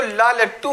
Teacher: पार्श्व का मतलब होता है बगल से हवा निकलती है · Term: पार्श्विक व्यंजन